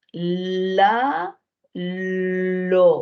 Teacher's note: cómo sale por un lado de la lengua por eso se le va a llamar lateral